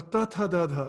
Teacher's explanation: Then for ta, tha, da, dha, like the tip of the tongue should touch the upper teeth.